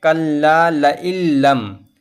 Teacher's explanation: تنوین یا نون ساکن کے بعد اگر تشدید والی لام آ جائے تو نون کو بغیر گنہ کے ملا کر پڑھیں گے۔ تو اس طرح پڑھیں گے کلا لئلم، یعنی ہم نے تو ملا کر پڑھا لیکن بغیر گنہ کے پڑھا، تو یہاں پر یہ قاعدہ ہوگا۔